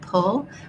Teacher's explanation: So if I'm saying the word pull, there's a puff of air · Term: aspirated